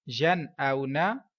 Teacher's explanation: واو لین ہے کیونکہ واو ساکن سے پہلے حمزہ پر زبر ہے تو یہ بھی لمبا نہیں کیا جائے گا. یا نون زبر ین، حمزہ واو زبر او، ین او، نون زبر نا، ین او نا.